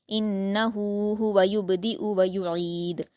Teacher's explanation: व युईद में आपको आइन की आवाज जाहिर करनी है। हलक से और दाल पर कलकला करेंगे।